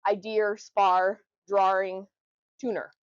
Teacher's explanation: Um and then the opposite of that, which is our insertion or the intrusive R, which means you add R where it doesn't belong